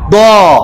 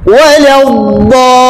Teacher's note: Huruf dad memiliki sifat istitalah, memanjang.